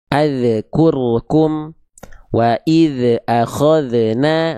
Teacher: melafalkan zal sukun mantul? Jadi ada bunyi e di ujungnya.